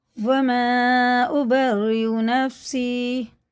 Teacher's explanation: اور مد بھی مد منفصل ہے، کیونکہ اس کے بعد الف آ رہا ہے تو 4 الف کے برابر اسے کھینچ کے پڑھیں گے، دونوں نون میں شد غنہ کر کے پڑھیں گے میم میں بھی.